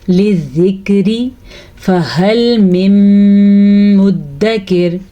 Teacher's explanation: فا کو لمبا نہیں کرنا، ہا کو لمبا نہیں کرنا، کیونکہ فا اور ہا دونوں کے اوپر پڑی زبر ہے